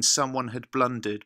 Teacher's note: we have just one syllable after blun rather than two, as in the rest of the poem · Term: dactylic dimeter